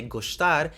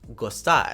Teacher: This is basically due to palatal approximation, or the tongue getting ready to say a palatalized consonant and therefore incorporating a palatalization to the S sound as well